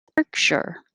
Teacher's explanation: 2 syllables. Stress on the first one.